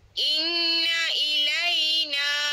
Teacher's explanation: Inna tu wajibal ghunah. Nah dua harakat tu.